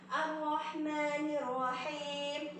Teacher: Lam syamsiah yaitu alif dan lam itu tidak terbaca, akan tetapi melebur ke huruf di depannya yang bertasydid